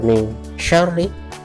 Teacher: shin cara membacanya tebal, lidah kita sedikit dilipat atau ditekuk ke atas, shin jadi tebal.